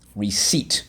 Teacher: notice that the p is silent